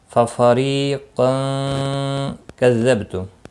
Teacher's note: قاف مستعلیہ ہے پر پڑھا جائے گا · أَفَكُلَّمَا جَاءَكُمْ رَسُولٌ بِمَا تَهْوَى أَنفُسُكُمُ اسْتَكْبَرْتُمْ فَفَرِيقًا كَذَّبْتُمْ ففریقا کذبتم، را زیر کی وجہ سے باریک پڑھا جائے گا، ری یا مدہ ہے ایک الف کے برابر کھینچ کر پڑھیں گے